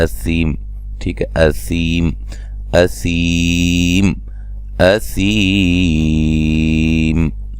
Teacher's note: تو وقفاً لمبی مد کے ساتھ وقف کر سکتے ہیں۔ 5 الف کے برابر بھی اس کو پڑھ سکتے ہیں، ٹھیک ہے۔